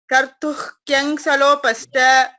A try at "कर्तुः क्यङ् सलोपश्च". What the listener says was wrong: सलोपश्च तत्र सकारस्य श्रवणं मास्तु। सलोपश्च पश्च इति वदति चेत् सकारस्य श्रवणं भवति। वस्तुतः तत्र शकारः अस्ति, शिवशकारः, तालव्यशकारः। सलोपश्च सलोपश्च एवम् आगन्तव्यम्।